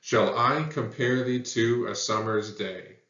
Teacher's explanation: you can hear those two syllable feet right every second syllable is emphasized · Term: iambic pentameter